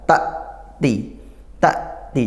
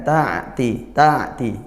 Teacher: Seolah-olah dia sakta, berhenti bunyi, karena memang suaranya tertahan gitu ya. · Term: hamzah sukun